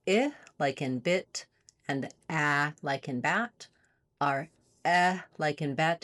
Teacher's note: It's a lax central front vowel. So it lies in between our other two lax vowels. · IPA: /ɛ/